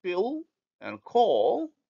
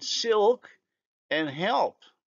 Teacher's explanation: the light L becomes dark if it is in word final position, as in pill and call, or followed by a consonant, as in silk and help. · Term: dark L